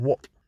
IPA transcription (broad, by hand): wɒʔ